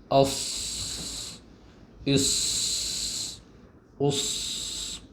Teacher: بہت باریک حصہ زبان کا ٹچ ہو رہا ہے دانتوں کے ساتھ ، تو اس لیے ان حروف کو صفیریہ بھی کہتے ہیں، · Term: حروف صفیریہ